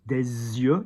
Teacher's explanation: you do the link of the S before because the Y